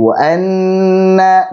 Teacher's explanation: Di wa anna, nun tasydid lagi. Ketemu dengan nun tasydid, panjangkan gunnahnya.